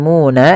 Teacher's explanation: Kemudian balafal muna, di sini ada bacaan mad tabi'i, yaitu ditandai dengan dhamma bertemu dengan huruf waw sukun. Maka cara membacanya yaitu suara munya dipanjangkan 2 harakat.